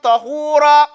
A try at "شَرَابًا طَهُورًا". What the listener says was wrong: No, not bum. There's no bum. It's بَا فَتَى بَا. Because if you're nothing else, sharaban. Say this.